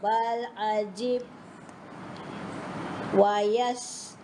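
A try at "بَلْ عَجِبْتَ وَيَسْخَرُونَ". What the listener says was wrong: Tapi tak bunyi ta tu. Saya nak anda dengar bunyi ta. Ta tak bunyi tadi.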